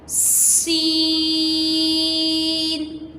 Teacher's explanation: سین بھی سیٹی اور سختی سے پڑھا جانے والا حرف ہے۔ سین کو بھی ہم سیٹی اور سختی سے ادا کریں گے اور 5 الف کے برابر پڑھیں گے، ٹھیک ہے۔ · سین کو اسٹارٹنگ میں سیٹی کے ساتھ اور پھر پورا 5 الف کی مقدار پڑھا، سین، ٹھیک ہے۔